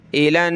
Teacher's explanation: नून पर तशदीद है तो गुन्ना होगा, यानी नाक में आवाज़ पैदा करेंगे